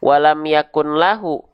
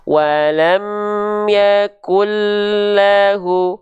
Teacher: Jadi dia tidak dibaca dengan menjelaskan bunyi nun. Itulah idgham bila gunnah.